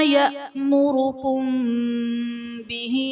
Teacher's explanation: میم ساکن کے بعد حرف با آ رہا ہے تو میم ساکن میں ہم غنہ کریں گے، یہاں پر اخفاء شفوی کا قاعدہ ہوگا۔